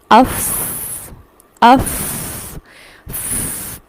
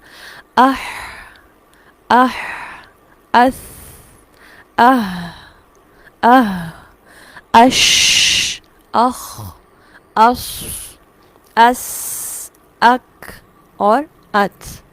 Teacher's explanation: یہ جو ساؤنڈ ہے اسے کہتے ہیں سانس جاری رہتا ہے. آواز ایسی پستی اور ضعف کے ساتھ ٹھہرتی ہے کہ سانس جاری ہوتا ہے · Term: صفت ہمس